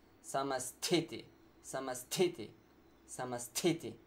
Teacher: There's no ha sound. It's not combination of ta and ha, but it's ta with an extra air, which should come from your abdomen. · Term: aspirated sounds